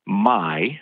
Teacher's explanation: your mouth starts in one sound the ah and it moves to the e